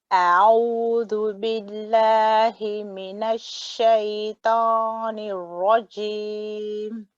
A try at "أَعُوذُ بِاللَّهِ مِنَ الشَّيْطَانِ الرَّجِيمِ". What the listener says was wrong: You've got the gunna out of that. Just remember, when you say the first bit, أعوذ, stay completely relaxed for the hamza. It still feels like you're a bit tense because you're getting ready for the ain.